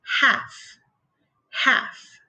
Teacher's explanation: In this case, the L is a silent letter. So we say half, half.